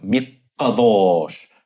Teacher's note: sometimes you get the qof uh geminated to really separate it clearly